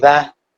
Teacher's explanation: the tongue touches the bottom of the teeth